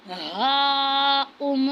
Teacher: ہا کو موٹا پڑھنا ہے اور الف پر مد ہے، اس کو 5 الف کے برابر کھینچنا ہے۔